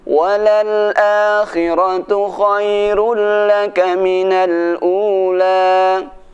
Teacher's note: walaupun dhammahnya double tapi tidak dibaca dengung, tapi dibaca dengan cepat